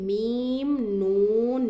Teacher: जब हम मीम पढ़ते हैं तो हमारी नाक में है ना आवाज घूमती है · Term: गुन्ना की हालत